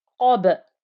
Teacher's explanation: Because I'm putting a sukoon, ignoring the fatha, and ba with a sukoon gets a qalqala